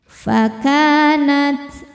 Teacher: Karena ada alif didahului harakat fathah. Cara bacanya panjang dua harakat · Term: mad thobi'i